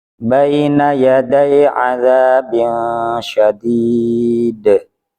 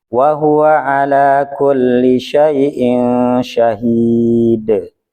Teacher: Ini huruf qalqalahnya berada pada posisi huruf terakhir ketika berhenti. Nah, ini qalqalahnya qalqalah kubro. Pantulannya, penekanannya lebih kuat.